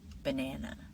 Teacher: The middle syllable is stronger. It's a little stronger, a little louder